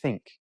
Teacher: And then with like think, it's a soft or unvoiced. You don't hum, you don't vibrate, you just say think. But it's still the tongue goes, touches your teeth.